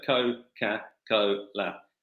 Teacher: So co, ca, co, la. and you've got a long vowel and a short vowel followed by a long vowel and a short vowel. There's a rhythm to the name, which we're calling cadence, that just makes it a beautiful thing to say.